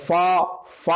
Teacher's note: اس میں جو الف کا تلفظ ہوا اس میں انفتاح فم ہو گیا مکمل طور پر، تو گویا کہ الف کو بھی اسی طریقے سے پھیلا کر کشیدہ طور پر لکھ دیا گیا۔